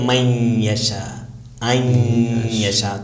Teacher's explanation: نون تو نہیں پڑھا جائے گا لیکن نون کا غنہ، نون کا ساؤنڈ ناک سے نون کی خوشبو آتی رہے گی